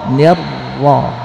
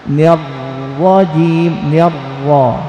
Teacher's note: Ujung lidah mendekati langit-langit, tapi ada getar, tidak tersentuh.